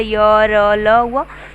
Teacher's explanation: ऐसे व्यंजन जिन्हें बोलते समय मुख विवर बहुत संकरा हो जाता है, फिर भी हवा बिना अवरोध के स्वरों की भांति सीधी निकाल जाती है, अंतस्थ व्यंजन कहलाता है।